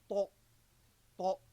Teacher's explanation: the adhesion of the entire tongue to the roof of the mouth, the whole roof of the mouth. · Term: itbaq